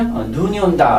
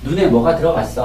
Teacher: 눈이 온다 라고 할 때는 길게 하고 눈에 뭐가 들어갔어 할 때는 짧게 하잖아요. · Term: 소리의 길이